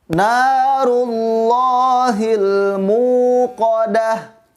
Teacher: bacaannya tidak perlu disentak karena bacaannya panjang yaitu hukum Mad Thobi'i atau mata asli Hai narullahil muqodah muqodah bacanya dua harokat panjangnya